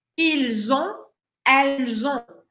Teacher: Ah, acá sí va a ser muy importante que hagas el sonido con este sonido de z, de z vibrante